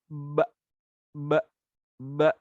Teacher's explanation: Istifal itu lidahnya di bawah. Lidahnya tidak terangkat ke atas. Ya, tidak naik ke atas. · Nafasnya, udara yang ada pada mulut itu ditahan, tidak boleh dihembuskan. Dan juga huruf ba itu punya sifat namanya syiddah. Syiddah itu suaranya juga tertahan.